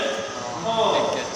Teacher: কণ্ঠনালীয় ব্যঞ্জন মাত্র একটা, এটা উচ্চারণের সময় উচ্চারিত হয় কণ্ঠনালীতে। এই জন্য নাম হবে উচ্চারণ অনুযায়ী কণ্ঠনালীয় ব্যঞ্জন।